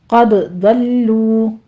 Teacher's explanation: قد ضلوا، قاف بھی پر ہے، ضاد بھی پر ہے، دال کے اوپر قلقلہ کریں گے اور لام کے اوپر تشدید ہے، سختی کیجئے، آگے واو مدہ ہے، 2 کاؤنٹ کر لینا ہے دونوں ہونٹوں کو گول کرتے ہوئے۔ ضلالا بعیدا، ضاد کو پر پڑھتے ہوئے آگے آپ نے لام کو موٹا نہیں کرنا، باریک ہی رکھنا ہے، آگے تنوین کا قاعدہ اقلاب ہو رہا ہے، 2 کاؤنٹ کر لیں گے۔